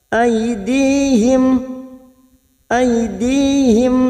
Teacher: mim sukun bertemu Sin Idhar syafawi mim sukun dibaca jelas